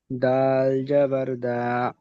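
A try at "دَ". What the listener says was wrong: দা কান দিচ্ছে কেন? দাল যাবার, দাল যাবার দা কান দিচ্ছে কেন? এটা তো হারাকাত এসছে।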